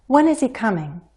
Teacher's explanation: I asked my WH question the first time with falling intonation